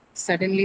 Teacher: And has an Ly suffix. So, your uh uh stress has to be on the first syllable · So your stress has to be on the first syllable, right? Suddenly, seriously, both on the first syllable.